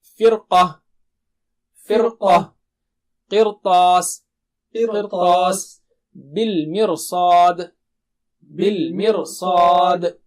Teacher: تو دہرائیے میرے بعد، را کو موٹا کرتے ہوئے سب حالتوں میں، فرقہ، فرقہ، قرطاس، قرطاس، بالمرصاد، بالمرصاد۔